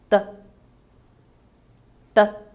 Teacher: the primary obstacle is formed by a closure made between the tip of the tongue and the upper alveolar ridge